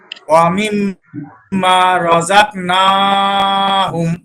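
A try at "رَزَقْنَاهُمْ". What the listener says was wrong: রাযাক কলকলা করেন, রজাক। রজাক ধাক্কা দিয়ে, হ্যাঁ, ধাক্কা দিয়ে শুধু কাপ করলে হবে না, ধাক্কা দিতে হবে কপের উপরে, কফ। রজাক।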